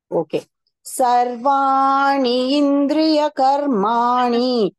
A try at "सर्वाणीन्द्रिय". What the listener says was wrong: You say ni and na. Nin. Driya. Sarvanindriya.